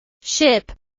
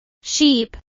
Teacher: For example, the vowel sounds in words like ship and sheep are often confused. The vowel sound in ship is a short sound, while the vowel in sheep is a long I sound.